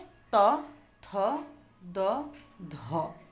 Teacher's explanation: জিভের ডগা উপর পাটি দাঁতে লেগে বায়ুপথে বাধার সৃষ্টি করে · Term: দন্তব্যঞ্জন